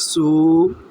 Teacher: سو کو ایک الف کے برابر کھینچیں گے